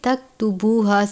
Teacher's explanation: یہ جو کاف ہے باریک کاف ہے، اس پہ آپ نے جھٹکا نہیں کھانا، تک نہیں پڑھنا بلکہ تکتبوہا صرف ظاہر کرنا ہے۔